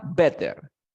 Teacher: La T entre dos sonidos de vocales. Suena como ere R.